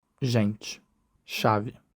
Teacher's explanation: Notice that in Brazilian Portuguese, when A is unstressed, it's commonly reduced to E.